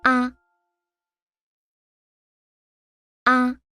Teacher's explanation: Ah, this is the neutral tone. The neutral tone is a short and light sound. It is shorter than the other tones.